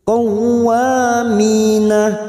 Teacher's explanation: mi kasrah diikuti ya sukun mat tabi'i, 2 harokat kita panjangkan.